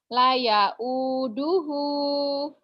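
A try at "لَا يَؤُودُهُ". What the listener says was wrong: La-nya panjang, ada alifnya. La ya'uduhu.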